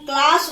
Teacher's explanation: अगर हम क्लास बोलते हैं तो क के तुरंत बाद हम ल का उच्चारण करते हैं